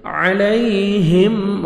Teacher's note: میم ساکن کا اظہار ہے جلدی پڑھیں گے